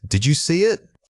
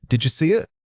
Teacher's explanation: A common error is pausing too much after the dead sound. In rapid conversation, the did you almost always links together into a single breathy unit. Try to pull those two words into one continuous motion. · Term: Natural linkage